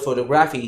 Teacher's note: When you say the word photography, it's not photography, it is photography, you stress on TO.